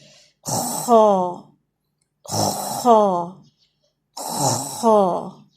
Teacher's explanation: یہ گلے کے بالکل اوپر والے حصے ٹاپ پارٹ آف تھروٹ سے یہ ادا ہوتا ہے اور یہ ہیوی ساؤنڈ ہے. جیسے خراش کی آواز ہوتی ہے نا اس میں یہ آواز شامل ہوگی.